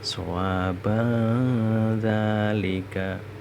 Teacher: Ini contoh tanwinnya yang bertemu zal. Jadi setiap ada nun sukun atau tanwin bertemu huruf zal itu namanya bacaan ikhfa hakiki. Bacaannya harus dengung.